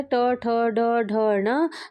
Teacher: मूर्धा में हमने लिया था आपका ट वर्ग के जो भी आपके वर्ण आते हैं वो मूर्धा में आते हैं